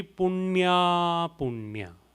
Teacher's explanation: n with the dot below so rolling your tongue up